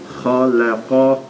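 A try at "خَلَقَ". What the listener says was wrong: And I did hear the click in the back of your throat with that. That is good.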